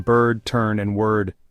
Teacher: E as in nurses, long, mid, and central, heard in bird, turn, and word.